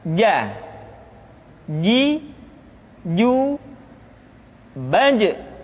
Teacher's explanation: Selanjutnya adalah huruf ja, dikeluarkan dengan menyentuhkan tengah-tengah lidah dengan langit-langit.